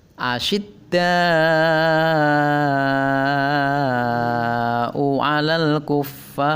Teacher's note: Nah, ada di sana ada hamzah yang sebelumnya didahului oleh huruf alif, maka da-nya dibaca panjang 5 harokat atau 5 ketukan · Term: mad wajib muttasil